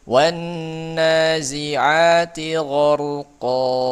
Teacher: Ya, kalau kita wakafkan di sini maka tanwinnya diiwad oleh huruf mad, oleh alif jadi panjang, diganti diiwad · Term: mad iwad